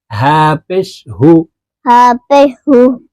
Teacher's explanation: এটি হলকের শুরু থেকে উচ্চারণ হবে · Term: ছোট হা